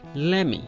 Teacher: the let me is ending at T, let. So we skip the T sound while we're going to say me